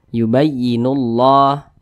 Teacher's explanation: maka kalimat Allah dibaca takhim dibaca tebal nah yubayyinullah nullah jangan nullah tapi nullah dibaca tebal seperti itu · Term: tafkhim